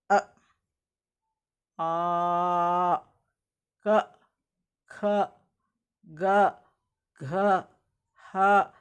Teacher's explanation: ಇದು ನಾಲಿಗೆನು ಬಳಸಲ್ಲ ಇಲ್ಲಿ ನಾವು ಹಲ್ಲು ನಾಲಿಗೆ ಹೋಗಿ ಹಲ್ಲುಗೂ ತಗಲಲ್ಲ ಯಾವ ಕಡೆನೂ ಅಲ್ಲಾಡಲ್ಲ ಬರಿ ಶಬ್ದ ಮಾತ್ರ ಗಂಟಲಿನಿಂದಾನೆ ಬರುತ್ತೆ ಅಂದ್ರೆ ಕೊರಳಿನಿಂದ ಬರ್ತಾ ಇರುತ್ತೆ ಅದು ಅಂತಹ ಶಬ್ದಗಳಿಗೆ ಕಂಠ್ಯ ಶಬ್ದಗಳು ಅಂತ ಹೇಳ್ತಿವಿ